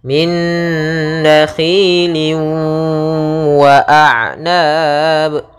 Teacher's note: tanwinnya masuk kepada huruf waw, kemudian ditahan gunnahnya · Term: idgham bi gunnah